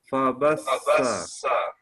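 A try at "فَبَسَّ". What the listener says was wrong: Nah, sifat sofirnya dihilangkan, Pak. Sifat sofir itu sifat suara mendesis. Dia lembut.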